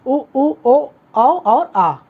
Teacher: ये सब आपके जीभ के पिछले हिस्से से बोले जाते हैं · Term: पश्च स्वर